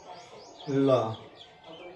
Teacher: तो ल ध्वनि का उच्चारण स्थान दंत होगा।